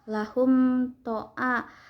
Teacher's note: Hum ishar safawi karena ada mim sukun bertemu dengan huruf to. Cara baca mimnya dibaca dengan jelas